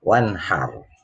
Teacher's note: ro tafkhim, yaitu ro-nya dibaca tebal karena huruf sebelumnya berharokat fathah.